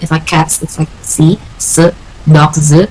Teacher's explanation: These are voicing alternation based on the final sound of the noun.